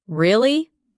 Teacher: when you ask a question like really, your voice goes up slightly at the end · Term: rising tone